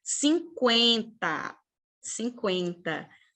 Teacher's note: Porque esse E com esse N, pessoal, não dá um som de I, não é 50, 50, não. Esse N, a única coisa que ele faz é tornar o som do E nasal, 50, eu tenho parte do som do E pronunciado pelo nariz, né?